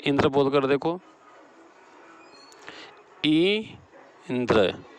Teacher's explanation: ई पर अधिक बल पड़ रहा है, इसलिए यहाँ ई पर बलाघात है।